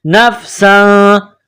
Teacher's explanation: تنوین کے بعد فا ہے, حروف اخفا ہے, تو یہاں غنہ کیا جائے گا, آواز ناک میں چھپائی جائے گی